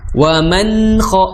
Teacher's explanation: wa man kha ditahan dulu, ditunaikan sifat gunahnya dari huruf nun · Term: idhar